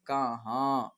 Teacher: ठीक है, काफ ज़बर का, हे अलिफ ज़बर हा, कहा नून गुन्ना कहाँ। ठीक है, अगर नून गुन्ना नहीं होता तो कहा ही होता, लेकिन नून गुन्ना लगा तो हो गया कहाँ